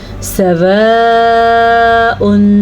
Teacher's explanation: 3 से 4 सेकंड या 5 सेकंड तक ये मद लंबी होती है और इसकी मिकदार 5 हरकत अरबिया हैं।